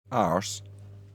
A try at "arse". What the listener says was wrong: He's still saying it wrong. It's arse. No, arse, not arse. You don't roll the R.